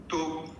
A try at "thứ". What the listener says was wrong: Thứ. Thứ. The vowel ư. So we practice that can see our teeth. Ư. Ư. Remember that vowel. Ư. Not u. It's ư. So therefore, yes, we call it like thứ, thứ, thứ.